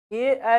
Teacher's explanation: ए का उच्चारण स्थान कंठ और तालू दोनों होता है